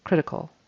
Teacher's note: that a on the end is just the tongue going up and making an l sound